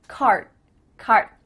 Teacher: My tongue is flat against the roof of my mouth to make the D, but it's not coming out.